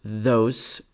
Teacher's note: the word those begins and end with voiced fricatives